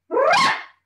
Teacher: it's like saying the word rah, like rah, rah, sisumba, but with a rolling R, and it's just really loud and really short